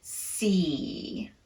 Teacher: This is not a relaxed tongue position at all. The tongue is very tense on that E. · In the word see, the vowel is naturally elongated a bit because there's no other sound after it. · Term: long E